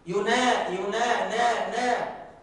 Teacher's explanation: وأيضا النون المفتوحة أو النون المحركة فيها غنة